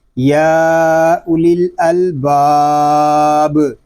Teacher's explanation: اب ناظرین یہاں دیکھیں مد عارض کیوں ہو رہا ہے کہ الف مدہ کے بعد عارضی سکون آ گیا ہے، یعنی وقف کی وجہ سے ہم نے با کو خود ہی ساکن کیا ہے، اور با چونکہ ساکن ہو گیا ہے اس لیے با ساکن میں پھر کلکلہ بھی کریں گے